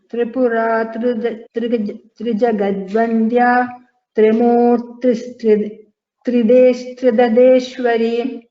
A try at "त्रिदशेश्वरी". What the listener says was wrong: There is no double da. Tridasheshwari.